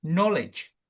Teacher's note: knowledge kan know-nya yang kencang